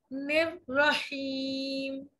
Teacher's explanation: लेकिन निर रहीम में निर बारीक, फिर रहीम का रॉ मोटा।